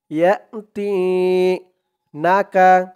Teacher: জেরের পরে ইয়া সাকিন, এক আলিফ টান